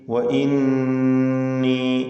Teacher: വഇന്നീ ഖിഫ്തുൽ മവാലി വഇന്നീ, ഈ പദത്തിലെ നൂൻ മുഷദ്ദദ, ശ്രദ്ധ നൽകപ്പെട്ട നൂനിനെ ഉന്നത്ത് ചെയ്ത് 2 ഹറക്കത്തിൻ്റെ അളവിൽ മണിച്ചുകൊണ്ട് ഉച്ചരിക്കേണ്ടതാണ്